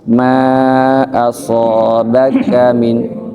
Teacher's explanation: Aso itu lemah. Yang kuat so ya. Nekan ke makhrajnya.